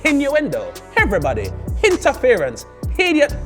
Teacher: caribbean people tend to add h to anything with a vowel